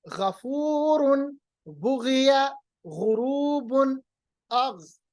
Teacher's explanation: इनको अदा करते वक्त थोड़ी सी खराश होती है। मिसाल गी गु, अब देखिए थोड़ी सी मैं खराश अदा कर रहा हूं।